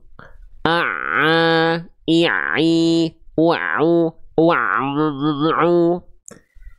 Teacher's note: suara masuk ke dalam rongga hidung sehingga terdengar ngirung atau sengau atau bindeng